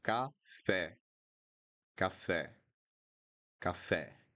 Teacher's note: It needs to be open. The open e, café. Then we have pé, pé, again open.